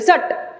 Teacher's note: ट को उधर आधा ही छोड़ देना है, क्योंकि ये आधा है, इसके आगे कुछ हमको सुनाई नहीं दे रही है मात्रा